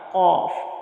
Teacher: ज़बान की जो जड़ है वो और तालु का नरम हिस्सा, वहाँ से कौफ अदा होता है मोटा, कौफ। अगर इसकी जगह हमने काफ पढ़ दिया तो वो भी गलत होगा, क्योंकि इसका और उसका मखरज में फ़र्क है, अगरचे थोड़ा सही है लेकिन फ़र्क है।